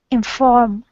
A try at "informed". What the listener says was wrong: The gals, you need to actually pronounce the D, but you don't pronounce the E. So it's informed.